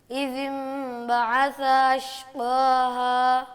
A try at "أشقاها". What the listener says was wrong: یہ قاف کہاں سے نکالتے ہیں آپ؟ سمجھ نہیں